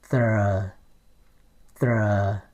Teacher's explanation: In Vietnamese you say thờ, thờ. You see a little rolling tongue in there. It's almost like Spanish here.